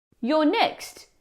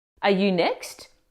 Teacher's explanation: just say the regular sentence but raise your tone slightly at the end